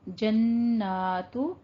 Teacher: جنات نون مشدد ہے، غنہ واجبہ کرنا ہے